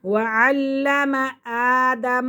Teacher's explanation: وعلم آدم، میم کو لام کے ساتھ ملائیں گے اور الف کو ایک الف کی مقدار کھینچ کر پڑھیں گے کیونکہ کھڑا زبر ہے